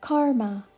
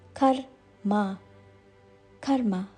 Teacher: pronounce it as karma but the correct pronunciation is karma k a short K followed by a slightly longer ma